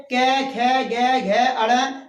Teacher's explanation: क वर्ग के जितने भी व्यंजन हैं आगे क, ख, ग, घ, अड़, ये हमारे जो है कंठ से बोले जाते हैं, इसीलिए इनका नामकरण कंठीय व्यंजन कहा जाता है, कंठीय।